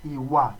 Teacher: But if it's iwa, the tonation is do do.